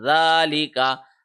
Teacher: رہا ہے، ایک سیکنڈ کا کو ہم نے لمبا کیا، ذالکا، ذال کے اوپر کھڑی زبر ہے، ایک سیکنڈ لمبا کیا